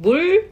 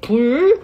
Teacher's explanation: So it's not a complete L sound, but it's in the middle of the palate, like a flat R, okay? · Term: L consonant